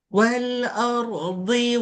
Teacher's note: Dad ni dari tepi. Pastikan bunyinya dari tepi lidah.